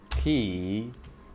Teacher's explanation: it's like I'm doing a voiceless E and then a regular E, He. and it's just breath.